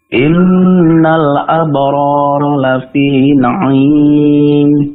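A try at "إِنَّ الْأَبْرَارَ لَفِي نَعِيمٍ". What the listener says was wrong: Tapi yang pertama abrara, jangan masuk hidung, jangan abrara, jangan masuk hidung.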